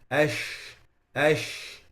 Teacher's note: Then we have the characteristic of which is the one we discussed uh in the beginning with brother TA um which is only unique for so it's the spreading of the sound of the sheen starting from its articulation point until the sound collides with the inner pallet of the top and the lower teeth ash ash like this.